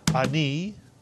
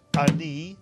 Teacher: it's one syllable. The A is like a grace note. Ani, not A-ni, but Ani.